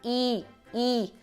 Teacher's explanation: quando você faz um i o i a língua também levanta mas o que levanta é a parte frontal dela